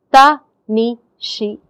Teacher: ta is 1 mora, ni is another mora, and shi is a 3rd mora. If you have to listen for tan, where part of the 2nd mora is already in the 1st syllable, then there is confusion. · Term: 3 moras